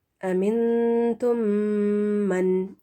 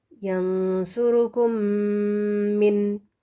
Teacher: غنہ 2 counts of میم ساکن. غنہ کریں گے ہم 2 کاؤنٹس کا، 2 حرکات کے برابر، اور میم ساکن کا ہی ہوگا